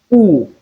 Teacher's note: And number eight which is U is described as short high back rounded vowel